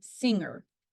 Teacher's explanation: It is a voiced velar nasal made when the back of the tongue makes contact with the soft palate, creating a closure in the oral cavity.